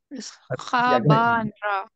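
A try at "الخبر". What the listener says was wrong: Yep. Al. Don't forget al. And then khaba and ra.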